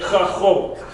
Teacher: It's almost like a K but with an H in it. It's like you're trying to cough something up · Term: chet